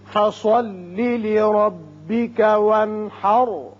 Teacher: لربک را پر ہوگا اس لیے کہ اوپر زبر ہے